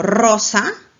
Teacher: la vibrante múltiple sirve para las letras r cuando está en posición inicial por ejemplo rosa